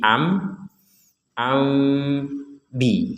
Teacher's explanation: seakan-akan kita akan mengucapkan huruf mim Tapi ternyata yang keluar huruf ba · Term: iqlab